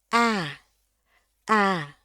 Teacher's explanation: itu bunyinya lebih tinggi nadanya ketimbang A orang Indonesia. Karena orang Indonesia itu A-nya kita ngucapin itu lidahnya semuanya di bawah dan rileks banget.